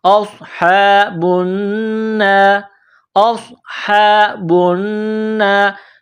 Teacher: نون میں آواز ناک میں چھپانی ہے، غنہ کرنا ہے ، را زیر ری، را کو باریک کرنا ہے، اصحاب النار،